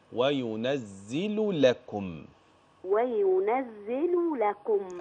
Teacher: أفصل اللام من اللام